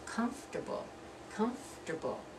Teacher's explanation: You're not going to be comfortable, that's 4 syllables, you're going to be comfortable. You're going to drop that second syllable